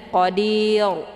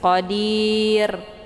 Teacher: bacaan yang salah tapi tipis Qadir bunyi rnya tipis cara bacanya posisi pangkal lidahnya tidak terangkat ke langit